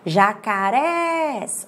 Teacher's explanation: Olha só, subiu o res. Então, essa sílaba que subiu é a sílaba forte.